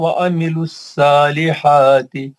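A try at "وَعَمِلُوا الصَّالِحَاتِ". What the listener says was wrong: सालिहाती नहीं बोलना, वामिलु सॉल। जहाँ जहाँ मुस्तालिया के हर्फ आए हैं उसको थोड़ा मोटा करने की कोशिश करो।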